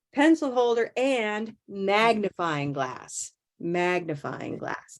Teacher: all of these have that special compound first word stress